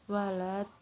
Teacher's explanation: Selanjutnya mad lazim kilmi mutsaqal, mad bertemu huruf yang bertasydid, panjangnya 6 harokat